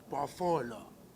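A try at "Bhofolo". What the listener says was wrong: Not Buffalo, it's Buffalo. B-O, not B-U.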